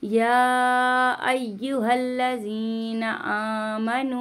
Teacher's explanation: मद मुनफसिल हो रहा है, इसको 3 अलिफ की पहले मिकदार हम खींचते हैं